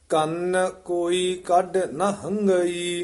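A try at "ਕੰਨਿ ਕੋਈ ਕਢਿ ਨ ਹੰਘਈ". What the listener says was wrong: ਇੱਥੇ ਕੰਨ ਭਾਰਾ ਉਚਾਰਨ ਕਰਨਾ ਹੈ। ਕੰਨ ਕੋਈ ਕੱਢ, ਇੱਥੇ ਠਮਕ ਲੱਗ ਜੀ। ਨਾ ਹੰਗਈ।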